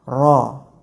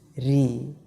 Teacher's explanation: Yang tadinya ro itu tebal, tapi ketika dia berharokat kasroh akan menjadi tipis, ri. Jadi bisa dikatakan harokat kasroh ini mempengaruhi ketebalan dari huruf-huruf isti'la atau huruf-huruf yang tebal.